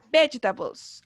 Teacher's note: Y cargamos la voz, ¿cierto? En las 2 primeras sílabas, ¿cierto? En veg.